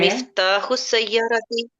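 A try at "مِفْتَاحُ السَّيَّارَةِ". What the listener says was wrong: very good,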